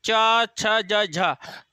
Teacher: देखो पूरी जीभ आपकी तालू में लटक रही है ना, पूरी स्पर्श हो रही होगी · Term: तालव्य ध्वनियां